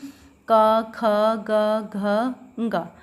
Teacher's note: अगर इन 5 वर्णों को हम बोल रहे हैं व्यंजन को, तो हमारा जो है कंठ से जो है आवाज़ निकल रही है